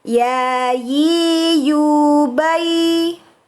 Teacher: Huruf ya, makhrajnya yaitu tengah lidah bertemu pada langit-langit bagian atas, ya. Huruf ya merupakan huruf yang diucapkan tidak dengan disertai udara. Pelafatan huruf ya hampir sama seperti huruf ya y-nya orang Indonesia.